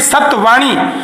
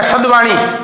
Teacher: व के कारण ये व घोष है, ये अघोष है त। तो त से त के पीछे व आने से त का द इसलिए बना क्योंकि इस त के पीछे घोष था, तो त भी अपने को घोष में बदलेगा, और इसका निकटतम घोष त, थ और द है।